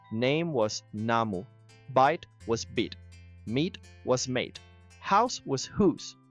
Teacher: The vowels all rose in the mouth, and the 2 already at the very top had nowhere left to go, so they broke apart into diphthongs.